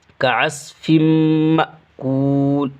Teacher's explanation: میم مشدد ہونے کی وجہ سے اس فا کو اس میں ملا دیں گے اور گنہ کے ساتھ پڑھیں گے، مأکول، حمزہ ساکنہ کے پڑھنے میں جھٹکا ہوتا ہے تو یہ حمزہ ساکنہ ہے، مأکول۔